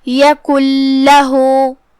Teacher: آخری میں نون پہ جزم ہے اور اس کے بعد حرف اللام آتا ہے کلمت لہو میں، جو کہ لام حروف الادغام بغیر غنہ میں سے ہے، اور ادغام کا معنی ہے حرف کو حرف میں داخل کر دینا، تو ہم نون کو لام میں داخل کر کے بغیر غنہ کے لیکن تشدید کے ساتھ یہ حکم کو ادا کریں گے